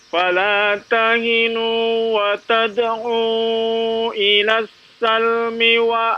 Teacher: jangan dipanjangkan mi-nya, pendek